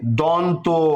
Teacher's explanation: এই দন্ত শব্দ উচ্চারণ হচ্ছে আমাদের ঠিক দন্ত থেকে।